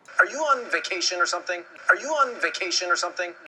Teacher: 그런데 그렇게 눌러지지 마시고 션 할 때 마지막에 션 할 때 살짝 입천장에 살짝 긁는 정도로 사운드를 살짝만 만들어 주시는 거지 꾹 하고 눌러 주시면 절대 안 되고요.